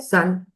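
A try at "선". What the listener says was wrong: So uh you you going with the o sound to it. It is sun.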